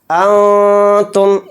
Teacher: ولا، اس طرح سے کھینچ کر پڑھیں گے۔ انتم، نون ساکن کے بعد تا ہے اور تا حروف اخفا میں سے ہے تو نون میں اخفا کر کے پڑھیں گے۔ انتم، اس طرح سے اخفا کریں گے۔